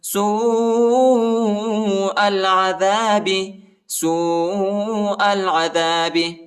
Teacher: فرعون یسومونکم، یسومونکم، یسومونکم سوء العذاب، سوء العذاب، واو کے اوپر جو ہے واو ساکنہ بھی ہے اور جو بڑا مد بھی آیا ہے، اس کو تقریباً 3-4 سیکنڈ تک کھینچنا ہے اور حمزہ کو لام کے ساتھ ملائیں گے، الف نہیں پڑھا جاتا۔